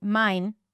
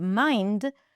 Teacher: If you tend to drop consonants left and right, and you might say mine instead of mind